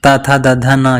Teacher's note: ता वर्ग को बोलते हैं दंत वर्ण।